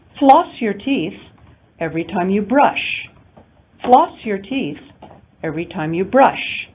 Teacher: notice that the rise in pitch occurs over the prominent element floss in our first sentence floss in the first intonation unit of our second sentence and brush in the second intonation unit of our second sentence